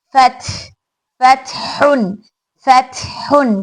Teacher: जैम एन फथ फतहुन फतहुन, क्योंकि ता में सिफत हमस है, शिद्दा है, शिद्दा और हमस की शिद्दा में आवाज एकदम रुक रही मखरज पे, और हमस में हवा एक निकलते वक्त हवा की आवाज वाजे हो रही है